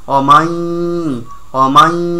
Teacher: মুখ দিয়া না নাক দিয়া পড়তে হবে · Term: গুন্না